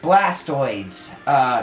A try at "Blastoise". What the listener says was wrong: Blastoise. Blastoise. Yeah, it's Blastoise.